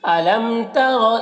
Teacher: میم میں اظہار شفوی ہو رہا ہے، اسے جلد پڑھنا ہے